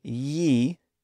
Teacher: the I sound and Y sound are essentially the same sound they just appear in different parts of a syllable · when you say ye you might constrict that initial sound a little bit more to create a contrast between the y and e